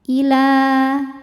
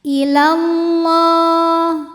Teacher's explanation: Kalau diteruskan atau diwasolkan jadi pendek karena madnya gugur, namanya takhallus bil hadfi. Jadi kalau berhenti panjang, kalau terus lamnya jadi pendek.